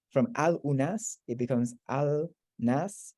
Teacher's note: the u sort of contracts out and falls out. So it becomes from al unas, it becomes al nas, and then the lam merges into the noon, an nas.